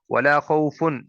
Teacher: خا حرف مستعلیہ ہے، اسے پر کر کے موٹا کر کے پڑھیں گے